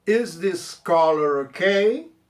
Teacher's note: Pega o R do color junto com ok